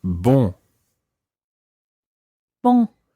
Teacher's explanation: the first syllable is very nasal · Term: nasal sounds